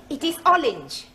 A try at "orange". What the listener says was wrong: You really must work at those R sounds. Try saying, round the rugged rock, the ragged rascal ran.